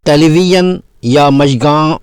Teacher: اردو اور فارسی زبانوں میں مستعمل ایک حرف یا ہے، جسے زائے عجمی بھی کہتے ہیں، کیونکہ یہ فارسی اور دیگر غیر عربی زبانوں کا حرف ہے۔ اس حرف کی ادائیگی کے لیے زبان کا درمیانی حصہ یا نوک سخت تالو کے پچھلے حصے کے قریب جاتی ہے اور ہوا رخنہ دار مقام سے نکلتی ہے